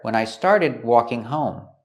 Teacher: the D in started is a stop D. We don't say when I started, we stop the air.